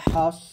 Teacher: আর এখানে সদ হবে হামস মানে বাতাস বের হবে আর সদ মোটা করে বলতে হবে